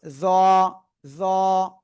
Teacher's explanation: তারপরে এই অক্ষরটা শিখেছি, জিহ্বার আগা উপরের 2 দাঁতের আগায় লাগিয়ে আমরা একটু মোটা আওয়াজে উচ্চারণ করব, জ, জ। ঠিক আছে।